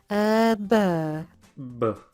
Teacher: In French, though, there tends to be a little bit of voicing before you open your mouth, which gives you more of a b sound.